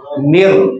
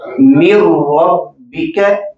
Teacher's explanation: नून मुकम्मल जम होके रा के अंदर पड़ा जाएगा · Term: इदगाम